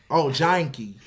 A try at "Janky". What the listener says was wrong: Janky. It's not J-I-N, it's J-A-N, Jank. It's not, just say it however you want to say.